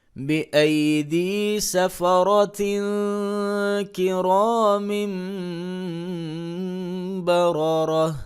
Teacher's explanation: وقف کی صورت میں بأيدي سفرة كرام بررة تا کو ہا کے ساتھ بدل دیں گے. اس پوری آیت میں را کے اوپر زبریں آ رہی ہیں، تو را کو ہمیشہ پر کر کے پڑھیں گے جب اس کے اوپر زبر آئے.